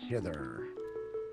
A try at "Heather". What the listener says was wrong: You just hither, not heather. You said hither. As in hither and yon.